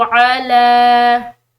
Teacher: لام کے اوپر یہاں کھڑی زبر ہے تو ہم نے اس کو لمبا پڑھنا ہے، یعنی کہ ایک الف کی مقدار کھینچ کر